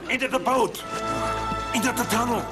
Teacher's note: the th sound can be hard to pronounce for German speakers th usually is replaced with a D sound